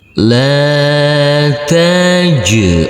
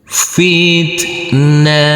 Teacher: Huruf jim yang bersukun ini kita pantulkan karena ini adalah bacaan qalqalah.